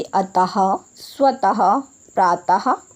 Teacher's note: विसर्ग का उपयोग ह की ध्वनि के समान उच्चारण के लिए किया जाता है। यानी कि जब हम विसर्ग का उच्चारण करते हैं तो हमारे मुख से ह की ध्वनि निकलती है